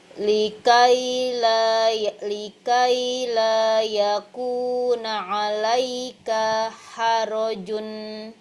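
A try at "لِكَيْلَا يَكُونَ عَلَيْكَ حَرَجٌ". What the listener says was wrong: Kafnya panjang pendek. Kafnya panjang apa pendek? Ya, tadi dibaca kepanjangan.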